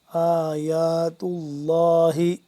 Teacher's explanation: لفظ اللہ کو پر کر کے پڑھیں گے کیونکہ اس سے پہلے پیش ہے